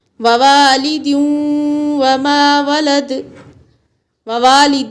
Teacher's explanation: یہاں ادغام مع الغنہ ہوگا کیونکہ تنوین کے بعد واو حروف ادغام کا ہے